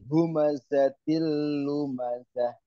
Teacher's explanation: Wailul itu tanwin ketemu dengan huruf lam, namanya idgham bila gunnah.